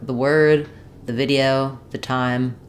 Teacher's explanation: I'm almost doing no vowel at all it's almost more like if I think about it like the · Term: very reduced vowel